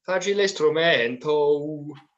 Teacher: you kind of stay on the O and make a diphthong out of it